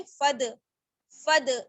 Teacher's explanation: अलिफ जो है नहीं पढ़ा जाएगा, अलिफ मद्दा नहीं होगा, बल्कि फा को हम दाल के साथ मिलाएंगे , फद, दाल साकिन है इस वजह से कलकला होगा, फद,